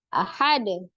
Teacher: pada saat waqaf, huruf dalnya qalqalahnya adalah kubro, besar ya. Kalau di wasol atau di tengah disambung, dia qalqalahnya sughra.